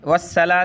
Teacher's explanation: والصلاة سین نہیں پڑھیں گے بلکہ صاد پڑھیں گے، صاد کو موٹا کیا جاتا ہے۔